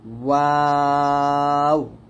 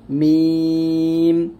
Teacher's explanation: ওয়াও দুই ঠোঁট গোল করিয়া বা দুই ঠোঁটের ভিজা জায়গা হইতে, মিম দুই ঠোঁটের শুকনো জায়গা হইতে উচ্চারিত হয়